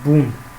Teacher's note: Если вы внимательно прочитаете слово бун, то вы поймете, что где-то между буквой Б и буквой У есть звук О, но он произносится настолько быстро, что почти незаметен